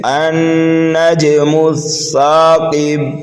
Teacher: نون مشدد میں غنہ کریں گے اور نون کو ہم جیم میں ملائیں گے، دوسرے نون کو، تو یہاں پر قلقلہ صغیرہ کریں گے، النجم الثاقب، ثاقب پر وقف کریں گے تو یہاں پر وقف بالاسکان ہوگا اور قلقلہ کبیرہ ہوگا